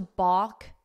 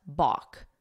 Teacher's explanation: that L is silent